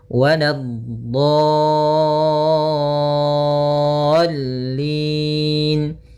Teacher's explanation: Untuk mad lazim musaqqal kalimi atau kalimi musaqqal panjangnya 6 harakat, maka panjangkan dotnya dulu 6 harakat, kemudian sempurnakan di dotnya, kemudian baru masuk ke huruf lam